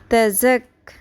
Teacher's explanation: سیٹی کی آواز آئے گی شدت کے ساتھ